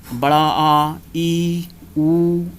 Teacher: इनके उच्चारण में ह्रस्व स्वरों की अपेक्षा दोगुना अर्थात 2 मात्रा का समय लगता है। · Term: दीर्घ स्वर